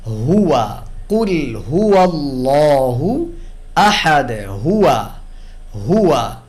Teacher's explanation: হা উচ্চারণ করবো vocal ক্রস থেকে, কণ্ঠনালীর একেবারে নিচের অংশ থেকে।